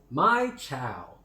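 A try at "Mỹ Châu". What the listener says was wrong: It's not My Chau. It's Mei Chau. Mei Chau.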